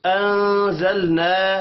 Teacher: نون ساکن کے بعد زا ہے، اخفاء حقیقی ہوگا، لام ساکن پر قلقلہ نہیں کرنا، الف مدہ کو ایک الف کے برابر کھینچ کر پڑھیں گے۔